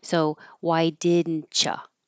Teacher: because there's a T and a Y next to each other, that's what will make the ch sound